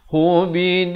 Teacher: Di sini idgham bila gunnah, tanwin bertemu lam.